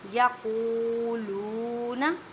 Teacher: یقولون، واو ساکن سے پہلے پیش ہے، یہاں دونوں جگہ واو مدہ کا قاعدہ کریں، مینس کے ایک الف کی مقدار میں کھینچ کر پڑھیں